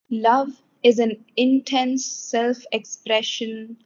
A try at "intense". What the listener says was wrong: Intense, not intense, but intense. Yes, the accent is on the second syllable.